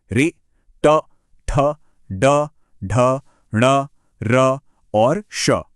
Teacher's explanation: महसूस कीजिए कि जीभ कैसे तालू के भी और पीछे जा रही है। · यहां पर आवाज निकालने के लिए जीभ को थोड़ा सा कर्ल करना पड़ता है। मतलब पीछे की ओर मोड़ना पड़ता है। · यह एक तरह का रेट्रोफ्लेक्स एक्शन है। जीभ का पीछे की तरफ घूमना। और जीभ के इसी खास एक्शन से यह बिल्कुल यूनिक साउंड्स निकलती हैं। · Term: मूर्धा